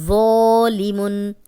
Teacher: اب یہ نرم بھی ہے، موٹا بھی ہے اور الف مدہ بھی ہے، خالی الف، پیچھے ذو پہ زبر، تو اس کو ہم 2 حرکات لمبا کریں گے، موٹا بھی پڑھیں گے۔